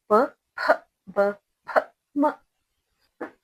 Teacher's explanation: ओष्ठ अथवा ओठ वाले व्यंजन यानी लिप्स, जो लिप को टच होकर यानी ओठ को टच होकर पढ़ने वाले अक्षर को ओठ वाले व्यंजन कहते हैं।